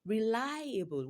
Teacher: Lie is longer and louder than others. So reliable is stressed on this on the second syllable.